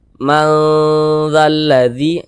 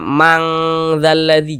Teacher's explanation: dengan huruf dza ini dia di tengah-tengah maka dikatakan ausat nah cara membacanya dibaca samar dan berdengung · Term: ikhfa Hakiki ausat